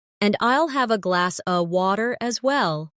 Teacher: In connected speech, glass of sounds like glass a.